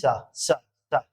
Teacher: और जीभ को जब हम दांत के साथ में टच करेंगे तो क्या होगा, दंती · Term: दंती सा